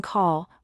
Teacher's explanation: In English, we have a light L as in love where the tongue touches the top of your mouth gently and a dark L like in call where the sound is deeper and happens more in the back of the mouth